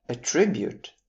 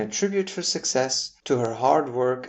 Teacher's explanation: if you put the stress on the mid-syllable, making it attribute, you would be saying the verb